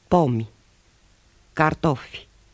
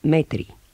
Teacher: I is almost silent at the end of words, except when preceded by a consonant.